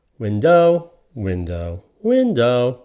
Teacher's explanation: It is indeed a trochee. The stress goes on the first syllable.